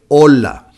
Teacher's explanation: the H never sounds as opposed to in English when we say hello or hi